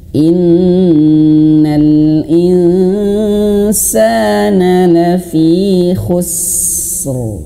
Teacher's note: harus khusus sinnya dialirkan dulu khusus baru rnya ditebalkan